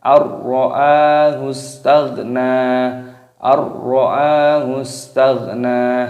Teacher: Tidak boleh kalau kita didengungkan tidak boleh, harus langsung ar-ra. Ar-ra'a, hanya di sini panjang hamzahnya. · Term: idgham bila gunnah